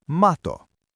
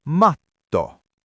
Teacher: To say the double T, you have to hold your breath for a split second on the T, like a tiny hiccup or a stop.